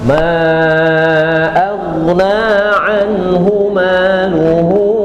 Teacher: huruf ghin teh bukan huruf qalqalah berarti kalau sedang sukun pun dia tidak boleh mantul